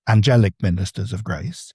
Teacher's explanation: angelic ministers of grace goes dee-DUM, dee-DUM, dee-DUM.